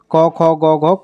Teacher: क ख ग घ कंठ से आवाज निकलती है